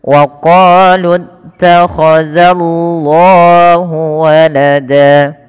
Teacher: Pada lafal Allah yaitu lafzul jalalah di sini perlu ditebalkan lamnya, tapi jangan menebalkan zalnya. Tidak dibaca wa qalu takhadzallahu, tapi za tipis baru Allahnya tebal.